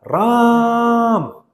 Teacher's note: तीन मात्रा मतलब तीन गुना ज्यादा बोल रहे